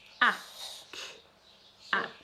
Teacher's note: rather than a ch sound, we've got a k sound.